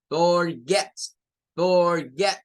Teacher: forget, la fuerza de voz cae en get